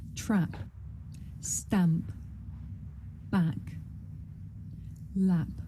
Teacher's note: This is a short vowel sound. It's pronounced ah.